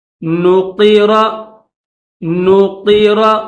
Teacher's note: فَإِذَا نُقِرَ، نُقِرَ، نون کے بعد یہ قاف ہے، قاف کے نیچے زیر ہے تو قاف کو موٹا پڑھیں گے، اور یہ را ہے، را کے اوپر زبر، را کو بھی موٹا پڑھیں گے.